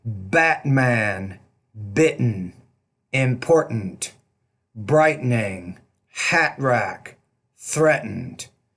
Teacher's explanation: it's the glottal stop and it's not a big deal if you pronounce it but Americans will use it a lot